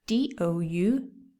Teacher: you don't pronounce the b the b is silent